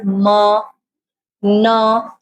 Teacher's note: sending the entire sound wave into the nasal cavity